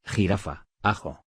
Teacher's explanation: Representa el sonido fricativo velar.